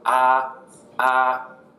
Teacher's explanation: Second one goes up, rising